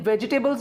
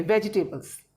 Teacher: जब आप V बोलेंगे, वेजिटेबल्स बोलेंगे, तो आपके लिप्स राउंड नहीं होंगे